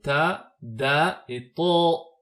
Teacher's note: c'est la pointe de la langue cette fois-ci qui s'appuie contre la gencive interne supérieure, donc juste au-dessus des incisives centrales, ce qui nous donne les lettres ta, da et to.